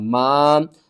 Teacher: الف سے پہلے زبر ہے، حروف مدہ ہے، 1 الف کے برابر آپ نے کھینچ کر پڑھنا ہے